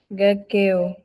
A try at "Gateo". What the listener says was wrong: Lève bien le ton.